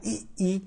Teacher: अग्र स्वर वे होते हैं जो जिहुआ के अग्र भाग से बोले जाते हैं